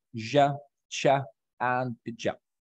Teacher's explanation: the tip of the tongue articulates with the alveolar ridge, with a simultaneous rising of the front of the tongue towards the hard palate.